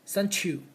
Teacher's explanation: So the t and the y, we will combine the sound become ch.